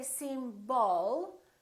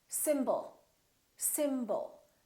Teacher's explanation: you let's take a word like symbol we have two syllables the first syllable is stressed and the second syllable is reduced when we have a reduced vowel we don't pronounce it fully